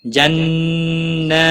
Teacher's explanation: ہا الف مدہ ہے، ایک الف کے برابر کھینچ کر پڑھیں گے۔ جنہ نون مشدد پر گنہ ہوگا، اس کے اوپر کھڑی زبر بھی ہے، ایک الف کے برابر کھینچ کر پڑھیں گے